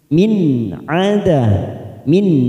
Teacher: nun sukun bertemu Ain kita baca jelas tanpa mendengung